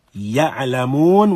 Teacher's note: ya again finds its place of origin in the middle of the tongue